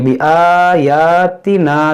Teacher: ता को नहीं खींचेंगे क्योंकि ता मुतहर्रिक है, यहाँ पर अलिफ खींचेंगे, अलिफ मद्दा है